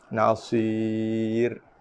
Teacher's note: Sebab ra di sini bersifat dengan nipis